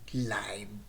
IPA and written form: laɪv (Live)